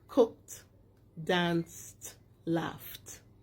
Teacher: those verbs with those endings sound like t.